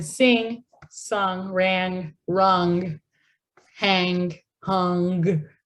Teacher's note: ng occurs here in the back of my mouth